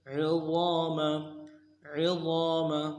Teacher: عین کو موٹا کریں گے، ضا کو موٹا کریں گے، ضا کے بعد الف مدہ ایک الف دال میں کھینچیں گے، میم کو لام سے ادا کریں گے.